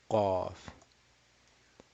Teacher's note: What is the makhraj of qaf? The back of the tongue. So if this is your tongue here, the tip of the tongue, all the way the back, the tongue down here, and is right in the back is your uvula.